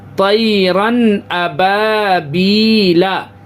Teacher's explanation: ناک میں آواز بالکل نہیں روکیں گے، ظاہر کریں گے، تنوین کی آواز کو ظاہر کر کے آگے جائیں گے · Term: اظہار حلقی